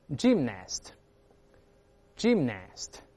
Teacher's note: 我们轻读但还是发▁i▁啊